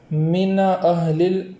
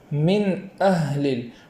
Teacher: من کے نون کو اس طریقے سے پڑھیں گے کہ اس کے اوپر زبر نہ ہو جائے، جیسے من اہل ایسا نہ ہو جائے، بلکہ اس طریقے سے پڑھیں گے من اہل۔ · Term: جزم